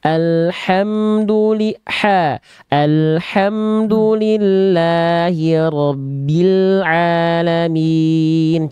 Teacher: H kecilnya lebih dilembutkan lagi, berbisik dari tengah tenggorokan. Alhamdulillahi rabbil alamin.